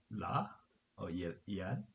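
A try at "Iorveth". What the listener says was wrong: So the first letter is is not an L. It's a capital I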